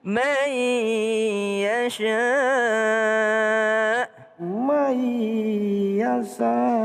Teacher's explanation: ada nun ketemu dengan ya berdengung